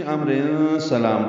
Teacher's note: ملانے کی صورت میں امر سلام تنوین کے بعد سین آنے کی وجہ سے اخفا ہوگا